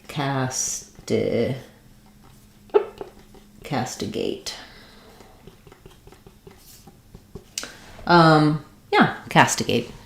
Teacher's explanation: castigate has first syllable stress. Letter A says the A sound. · We're going to have a schwa or an I unstressed second syllable there. And then secondary stress on the gate.